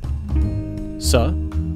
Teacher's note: a voiceless alveolar fricative